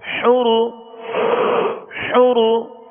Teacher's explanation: را کو پر پڑھیں گے، را پر پیش ہے